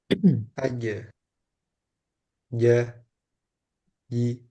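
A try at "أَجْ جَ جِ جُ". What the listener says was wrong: Nah, J-nya jangan disimpan suaranya. Ji, tapi ji, ji, keluarkan.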